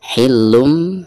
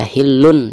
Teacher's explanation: Hillum, di atas lam ada tanwin dhammah tain lalu berhadapan dengan huruf ba, maka dihukumi iqlab ya. Jadi cara membaca tanwin yang ada di atas lam tersebut itu berubah menjadi mim sukun ya